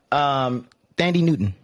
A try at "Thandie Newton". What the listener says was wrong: I think the H is silent. I think the H is silent.